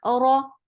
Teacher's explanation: Whenever ra has fatha or dhamma, it is heavy, and it is short. The sound is short.